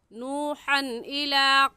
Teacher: नूहन की तनवीन पर गुन्ना नहीं करेंगे क्योंकि तनवीन के बाद हुरूफ हल्की जो कि 6 हैं, हमज़ा हा, आइन हा, गैन खा, उनमें से हमज़ा आ गया है, इसलिए इस तनवीन पर हम गुन्ना नहीं करेंगे।